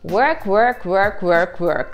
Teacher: Мы как будто бы хотим вытянуть губы, произнося звук «у», а потом забираем их резко обратно, возвращаем их в первоначальное положение, и получается звук «в».